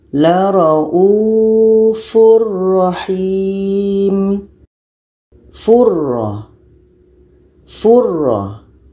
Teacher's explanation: Furra. Oke, tanwin masuk kepada ra dan tidak ada dengung. · Selanjutnya ini dalam surah Al-Baqarah ayat 143 ini ada tanwin bertemu dengan ra. Bunyi tanwin ini hilang masuk kepada ra. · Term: idgham bila gunnah